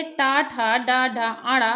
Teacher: मूर्धा से उच्चारण होने के कारण मूर्धन्य वर्ण कहे हैं